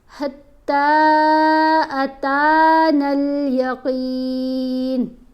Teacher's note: حتیٰ پڑھتے ہوئے تا کو 3 الف جتنا لمبا کرنا ہے اور یہاں پر تا کو 1 الف جتنا لمبا کرنا ہے.